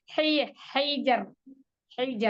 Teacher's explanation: Sempurnakan di tenggorokan tengah, kemudian alirkan. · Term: huruf H